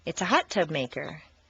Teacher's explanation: Leave the stress on the first word, fingernail clipper. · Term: 3-word set phrase